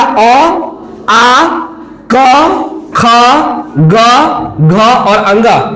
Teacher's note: अब ध्यान दीजिए कंठ में कौन कौन सा वर्ण का उच्चारण का जो हमारा कंठ होता है, कंठ का उच्चारण क्या क्या होगा ध्यान दीजिएगा। कंठ में आएगा अ, आ, क, ख, ग, घ और अंग, ये हमारा क्या है? कंठ का उच्चारण।